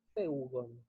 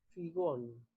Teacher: Pero el participio de auristo de este mismo verbo va a ser figón, ¿sí? Con acento sobre la desinencia. Por eso yo acá puse en negrita, se parecen mucho a los participios de presente, pero su diferencia radica en el lugar del acento.